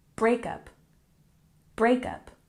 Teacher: breakup we put the emphasis on the first syllable